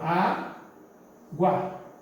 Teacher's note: O U é semivogal, que ele é rápido, e o A é uma vogal. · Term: ditongo crescente